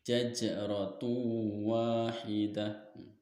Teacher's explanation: Karena huruf qalqalah jim, nah ini jim berharokat sukun dan posisinya di tengah kalimat. Cara membacanya yaitu jimnya dipantulkannya secara ringan. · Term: qalqalah sugro